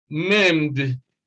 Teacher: Maimed is also D, maimed, because M is a voiced sound.